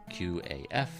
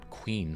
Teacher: it comes from deeper in the throat